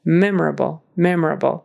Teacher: Accent on the first syllable